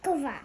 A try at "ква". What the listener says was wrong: О, молодець.